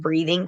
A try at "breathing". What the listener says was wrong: you did say breathing, not breathing, right? Because it kind of sounded like breeding.